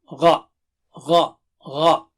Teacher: Gha and kha are thick and high.